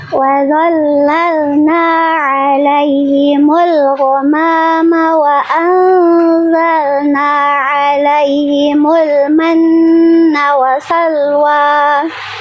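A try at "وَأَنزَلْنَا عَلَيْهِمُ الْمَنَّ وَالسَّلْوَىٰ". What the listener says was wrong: Wasalwa, sinnya ada tasdid harusnya. Itu dia, ditekan dulu.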